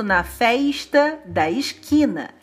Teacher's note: pronunciar um S chiado era assim coisa de gente chique, da elite